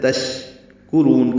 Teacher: تشکرون کاف باریک ہے، را کو پر پڑھیں گے اور لمبا کریں گے، تشکرون یہ مد عارض للسکون ہے۔